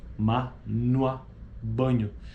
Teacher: Os articuladores produzem uma obstrução completa da passagem da corrente de ar através da boca. O véu palatino encontra-se abaixado e o ar que vem dos pulmões dirige-se às cavidades nasal e oral. Nasais são consoantes idênticas ou as oclusivas diferenciando-se apenas quanto ao abaixamento do véu palatino para as nasais.